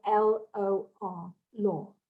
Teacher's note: languages and it really is literally the sound of l-o-r law very soft r at the end but that sort of focus of the mouth going into that